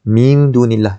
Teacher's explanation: Hukum yang ada pada situ ialah ayat ni, kataan tu ialah kalimah ni ialah ikhfa hakiki. Tak kena dengung 2 harakat, tapi sama-sama antara bunyi nun dan juga dal.